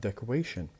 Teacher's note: But when we add ION, we will have decoration. The stress will be moved to the third syllable.